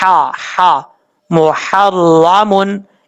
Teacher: میم کے بعد ہا بریک ہے، اس کو بھاری ساؤنڈ کے ساتھ پڑھنے کی ضرورت نہیں ہے، اس میں یہ ساؤنڈ آئے گا ہا ہا، محرمن.